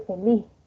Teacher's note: la S generalmente no andina se aspira, es decir, que suena en la laringe esa S como una ja laringe, ¿no?